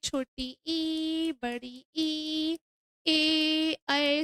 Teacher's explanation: वे स्वर जिनके उच्चारण में जीभ के आगे का भाग काम करता है अग्र स्वर कहलाते हैं।